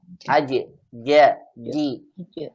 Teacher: dia menempel dengan langit atas Tengah lidah menempel dengan langit-langit atas · kalau jim ditempelkan sampai atas, tertutup nanti sifatnya jahar dan syiddah